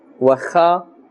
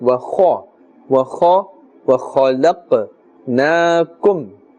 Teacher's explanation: Kha also part of the huruf musta'aliya, and therefore we must pronounce with a full mouth. Wa kha is incorrect.